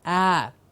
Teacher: We've seen how the sound is produced with the ah, a clear open mouth ah sound.